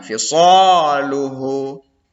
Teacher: Kemudian yang ketujuh fisaluhu, ya, terdapat hukum tajwid mad asli pada huruf shad, ya nak, ya, karena di depan shad itu ada alif, jadi shadnya panjang